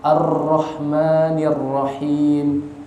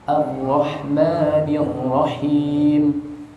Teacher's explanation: rohnya saya tebal banget, Ar-Rahmanir-Rahim, tipis saja yang benar